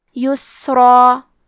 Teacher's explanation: تو ہم حرف الراء کو اور مد الف کو دونوں کو بھاری آواز میں ادا کریں گے